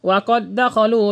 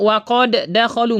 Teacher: Dan ini tidak boleh dimunculkan qalqalahnya karena dia idgham. Jadi enggak boleh kita baca waqod dakhalu, enggak boleh.